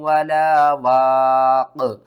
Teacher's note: اور قاف کے اوپر آپ نے کیا کرنا ہے، قلقلہ کرنا ہے